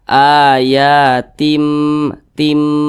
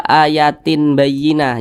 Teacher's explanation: bunyi n atau bunyi Nun itu dirubah menjadi mim Nah jadi dibaca ayatim tim nah jangan dibaca ayatin Bayyinah jangan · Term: iqlab